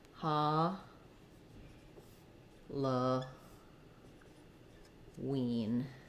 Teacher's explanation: in Halloween the stress falls on the wean syllable